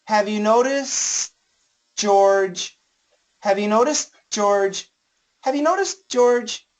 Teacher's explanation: So the S is there, but it should be really short, okay?